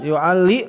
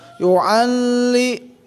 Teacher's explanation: li tidak boleh dibaca panjang, satu ketukan saja